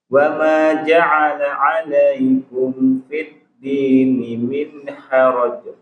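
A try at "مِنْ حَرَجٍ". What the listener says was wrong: Min haraj. Iya, jangan dikol-kolah minnya. Min haraj.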